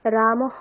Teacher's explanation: রাম এখানে অকারের পরে বিসর্গ আছে তাই হকারের সাথে অকার যুক্ত হয়ে রামহ এরকম উচ্চারণ হবে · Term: বিসর্গের উচ্চারণ